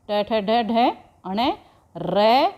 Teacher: यह सब किससे बोले जाते हैं मुर्धा से बोले जाते हैं और इन्हें मुर्धन्य शब्द कहा इन्ह मुर्धन्य कहा जाता है